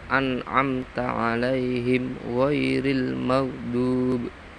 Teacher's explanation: An'amta mem mati bertemu ta harus dibaca jelas. Alaihim ghairi mem mati bertemu ghain juga dibaca idhar syafawi